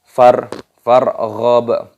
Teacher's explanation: Farghab, roknya berharokat sukun, dimatikan, dibaca farghab, baknya sukun, diqalqalah, dipantulkan suaranya